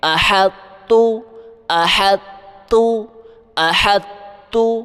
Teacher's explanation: ہم پڑھتے وقت طا کی صفت بھاری پن کو اپنی زبان میں برقرار رکھیں گے، مگر اس پر جھٹکا قلقلہ نہیں کریں گے، اور زبان کو سیدھا تا کے مخرج پر لے جائیں گے۔ یعنی آسان لفظوں میں آپ نے طا کی بھاری آواز نکالتے نکالتے سیدھا تا پڑھ دینا ہے۔